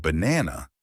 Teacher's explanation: in the word banana, the stress is on the second part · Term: word stress